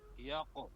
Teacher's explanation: तो वो एक तो ये है कि यक कहेंगे तो वो काफ बन जाएगा, कौफ को मोटा करना है कलकला भी करना